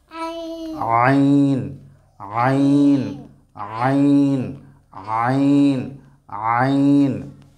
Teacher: আইন, গলার কণ্ঠনালীর মাঝখানে আমরা এটাকে চাপ দিয়ে পড়ব।